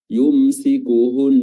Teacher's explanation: Sukuhunna nun tasdid, ya, nun tasdid ditahan durasi tasdidnya